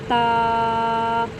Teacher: ता को हम जुबान को ऊपर तालू के साथ लगाएंगे